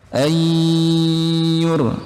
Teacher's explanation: Panjangnya 4 atau 5 harokat. Ayyu, nun sukun bertemu huruf ya, itu hukumnya idgham bi gunnah dengan dengung.